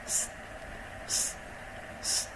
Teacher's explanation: the tip of the tongue is closer to the top front teeth, and the narrow stream of air passing the tip of the tongue will support the process of producing the sound